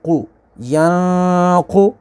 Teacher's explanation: قاف حروف مستعلیہ اس کو پر پڑھیں گے · نون ساکن ہے اور اس کے بعد قاف ہے، قاف حروف اخفا ہے تو یہاں پر غنہ کریں گے یعنی اخفا ہوگا۔